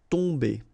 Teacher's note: Okay, so remember, you've got OM here, but after that you've got a consonant, so it does mean that this combination of OM will give you the sound on. Okay, you don't pronounce the M at all, so it's really a nasal, so it goes in your nose.